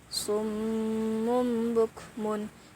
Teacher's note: membalikkan suara nun mati atau tanwin menjadi Bunyi mim mati yang ringan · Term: iqlab